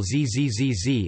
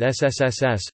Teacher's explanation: If one places the fingers on the voice box (i.e. the location of the Adam's apple in the upper throat), one can feel a vibration while zzzz is pronounced but not with ssss.